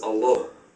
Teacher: The Aramaic is Allah, but without emphasizing the L. Hence this one L without a dot.